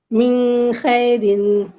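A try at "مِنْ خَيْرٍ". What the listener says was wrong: नहीं, मिन खैरिन। देखिए आप देखिए मिन में ना आप थोड़ा सा रुक जा रही है, रुकना नहीं है, ठीक है। देखिए मिन में रुक जा रही है ज़ाहिर तक निकल जाए, हम इक्फा या टू काउंट नहीं रुकना है वहाँ।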